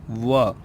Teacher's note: उसका उच्चारण करते समय जो जिह्वा होती है यानी जीभ होती है वो कुछ हद तक दांतों को भी स्पर्श करती है, और जो दोनों होंठ हैं लिप्स हैं वो भी आपस में जुड़ते हैं यानी आपस में मिलते हैं। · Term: दंतोष्ट